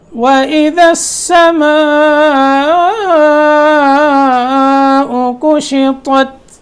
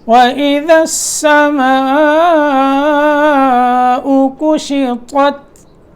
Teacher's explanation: وَإِذَا السَّمَاءُ، السماء پہ مد ہوگی، مد متصل واجب ہے